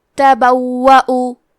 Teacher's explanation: کلمت تبوؤ میں واو پہ تشدید ہے تو ہمیں 2 حرف کے برابر واو کو پڑھنا ہے، یہاں واو پہ حمزہ ہے اور اس پہ پیش ہے تو ہم پیش کو ظاہر کریں گے اور حمزہ کو ظاہر کریں گے۔